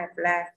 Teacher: âm ơ không nhận trọng âm rơi vào âm thứ hai